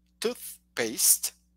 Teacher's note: got your upper tooth so you place the tongue there and your tongue should almost be sticking out you know and then you blow air between the tongue and the top teeth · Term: th sound